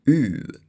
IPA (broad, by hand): ʉː